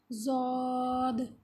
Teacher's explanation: یہ ہے جس کو کچھ لوگ داد بھی پڑھتے ہیں، اس کو نہ تو دال کی آواز میں لے کے جانا ہے اور نہ ہی زا کی، اس کی اپنی ایک آواز ہے جس کو ضاد۔ زبان کی کروٹ اور اوپر کی 5 داڑیں سب مل کر ادا ہوتا ہے ضاد